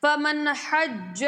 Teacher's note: نون ساکنہ کے بعد ہا ہے، اظہار ہوگا